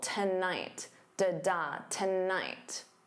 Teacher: So notice that syllable stress. The first syllable is unstressed. So to becomes that unstressed t and then night is your stressed syllable.